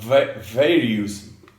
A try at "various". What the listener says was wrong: Okay, so the trick to remember here, right, is these words that end in OUS. The OUS rhymes with Miss, not us.